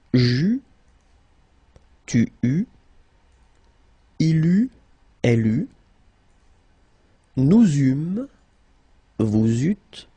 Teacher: we will pronounce it u all the time